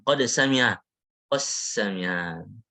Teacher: Qad sami'a Allah jadinya qassami'a Allah. Langsung ke sin.